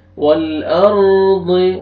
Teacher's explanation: را ساکن سے پہلے زبر ہے، را کو پر کریں گے